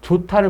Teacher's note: 디귿이 티읕으로 거센 소리로 바뀌었어요